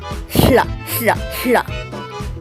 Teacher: And finally, there is hla, which is pronounced like a double L in Welsh, like in hlaw, the word for hand. It is pronounced by putting the tongue at the upper teeth and then pushing air through the sides of the tongue